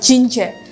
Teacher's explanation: Ketika kita bilang j, maka akan ada suara getaran dari tenggorokan kita.